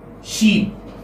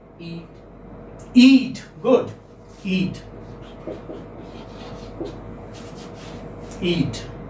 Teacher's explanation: So this is front close unrounded vowel. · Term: long E sound